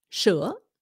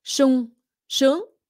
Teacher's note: The reason they say sh is because the S in proper Vietnamese is pronounced like an SH.